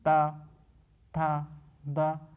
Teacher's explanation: ऊपर के दांतों पर जीभ लगाने से होता है तो उसे क्या कहेंगे? तो उसे दंत कहेंगे